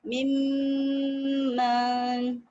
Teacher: For example, this is another कलमा, मिन नून साकिन, और इसके बाद यहाँ पे मीम आ गया, मीम मुशद्दद और नून साकिन, मिम्मन, एक अलिफ के बराबर टाइम देंगे और कंप्लीट मर्जिंग है, नून कंप्लीट मिल जाता है मीम में, और फिर क्या होता है, नाक में एक अलिफ के बराबर आवाज भी ठहरती है।